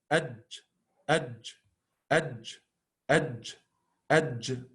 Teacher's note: the middle part of the tongue touches the roof like very clearly